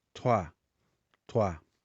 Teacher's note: tem um som mais aberto, uma sonoridade semelhante ao A